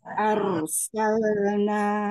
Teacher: Nanya dipanjangkan dulu 4 atau 5 ya